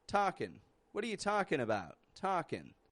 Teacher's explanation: some native English speakers will kind of omit G from these words and just pronounce a quick N sound